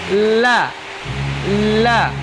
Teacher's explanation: Ya, bertemunya apa? Huruf lam keluar dari ujung dua tepi lidah. Keluar dari ujung dua tepi lidah. Pada akhir ujung lidah menempel pada gusi dari gigi-gigi bagian atas.